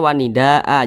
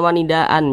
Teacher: wanidaa kita rubah sendiri wanidaa jangan wanidaan jangan tapi wanida a kita panjangkan dua harakat atau kira-kira dua ketukan Mad Iwat